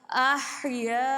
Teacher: ہا کی آواز آنی چاہیے، احیاء، الف سے پہلے زبر ہے، الف مدہ ہے یہاں پر، اور حمزہ اسی ہی کلمے میں موجود ہے، تو یہاں پہ مد متصل لگے، یعنی 2.5 الف کی مقدار ہم کھینچیں گے